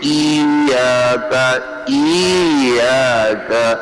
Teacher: یہ ای یا مدہ بن گئی ہے کیونکہ آپ نے وسط زبان کو اوپر نہیں اٹھایا